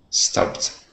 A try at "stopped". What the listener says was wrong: Great, that's it.